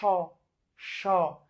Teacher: তালব্য স আর মূর্ধন্য স, এই দুইটার উচ্চারণ তো একই রকম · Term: উষ্ম ধ্বনি